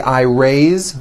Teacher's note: raise my hand now this word is a bit unusual because even though it is spelled with an s it's pronounced with a voiced z raise so we say i raise with a voiced z ending